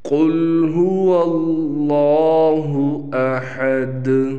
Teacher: یہاں دال پر قلقلہ ہوگا، وقف میں دال ساکن ہو گئی